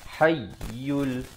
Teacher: Huwal hayyul, ha pedas. Tekankan di atas ya yang bersabdu. Hayyul, ya baris depan terus naik di atas lam yang bertanda mati.